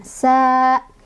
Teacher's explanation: Sa di sini ada mad tabi'i karena ada fathah ketemu sama alif. Cara bacanya dibaca 2 harokat, dipanjangkan.